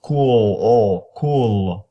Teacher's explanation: when you say cool your tongue is gonna rise up in the back